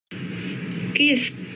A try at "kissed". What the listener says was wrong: Kissed. Kissed. I want to hear the ending sound, so make sure you focus on that. So make sure that your teeth is close together. Not They are two different sounds, all right?